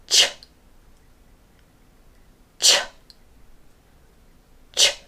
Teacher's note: There's a stop period and then a sudden release of air. So I want you to release the air at the same time as releasing only the tip of the tongue as you push air through, making sure the sides of the tongue are still touching the ridges.